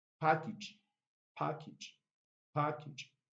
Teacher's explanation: prime stress on the first syllable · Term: primary stress